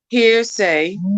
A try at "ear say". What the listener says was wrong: Here. Oh, that H. Don't pronounce the H. H, I forgot. Take that H.